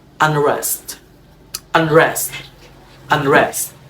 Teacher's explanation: the N post-alveolar before R